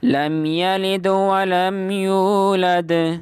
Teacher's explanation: اب دال کے اوپر قلقلہ، اور ولم یولد کی دال کے اوپر بھی قلقلہ کرنا ہے